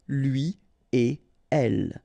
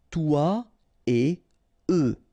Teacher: you don't make any liaison. So no links after et.